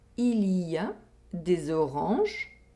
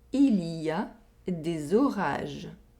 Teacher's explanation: Here we have a nasal vowel sound and an oral vowel sound. We have the O sound in the first sentence and the A sound in the second sentence.